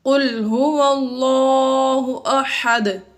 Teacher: یہاں پر هو اللہ میں لفظ اللہ اس میں جلالت اللہ کو پر کر کے پڑھا، کیونکہ اس میں جلالت اللہ عز و جل سے پہلے اگر حرف پر زبر یا پیش ہو تو اس میں جلالت اللہ عز و جل کو پر کر کے پڑھتے ہیں، اس لیے یہاں پر ہم نے اس کو پر یعنی موٹا کر کے پڑھا۔